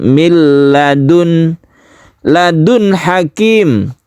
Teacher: Nun mati ini jelas suara n-nya dan tidak berdengung. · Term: izhar halqi